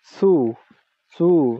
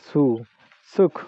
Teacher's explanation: সু, সু, দন্ত, দন্ত মূলে আপনার জিহ্বার আঘাত করতে হবে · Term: দন্ত স্বয়ের উচ্চারণ